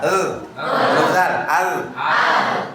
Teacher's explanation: tempelkan mulai dari ujung lidah sampai ke tengah ke langit-langit